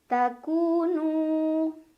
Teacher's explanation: Nu mad tabi'i karena ada waw sukun sebelumnya dhammah, cara membacanya dipanjangkan 2 harokat.